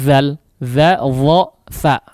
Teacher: Kalau huruf tha itu lidahnya dikeluarkan sedikit, ya, ujung lidahnya dikeluarkan. Jangan diucapkan di dalam, ya, atau lidahnya di dalam.